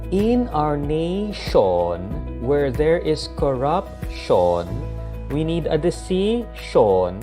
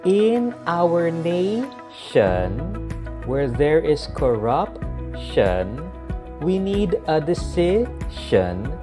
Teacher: the proper way to pronounce the tion isn't with Sean, but with shan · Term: schwa